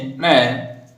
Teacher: इसको नाक से बोलेंगे, साथ में नाक से भी ध्वनि निकलेगी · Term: नासिक व्यंजन